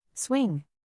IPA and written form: swɪŋ (Swing)